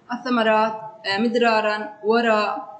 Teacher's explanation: سبقت براء مفتوحه مثل الثمرات مدرارا وراء لذا نطقت مفخمه